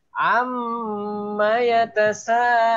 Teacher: Jangan a baru am. A-nya cukup satu ketukan, satu harokat. Mim bertasdidnya baru bisa sampai 3 harokat. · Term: wajibul gunnah